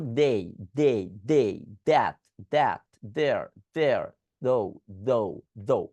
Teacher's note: Same sound, দই sound করেন, কিন্তু উপরের দাঁত নিচের দাঁত দুটো জিহ্বার মধ্যে কামড় রেখে করবেন।